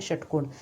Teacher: यदा मम उच्चारणं भवति तदा जिह्वायाः पृष्ठभागः मूर्धानं किंचित स्पृश्यति. जेव्हा माझं उच्चारण होते तेव्हा जिभेचा पृष्ठभाग मूर्धानं किंचित स्पृश्यति मूर्धेला स्पर्श करतो. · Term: मूर्धन्य